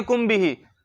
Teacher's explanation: جب میم ساکن کے بعد حرف با آ جائے تو اخفاء شفوی ہوتا ہے، گناہ کر کے پڑھتے ہیں